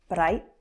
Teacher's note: You will also notice with a Scottish accent that the R sound is more prominent. At times they tend to roll the R, not so much, but definitely maybe that one time so that you do hear it a little bit more. · so you can hear that i am rolling that r a little bit but not too much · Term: tapped r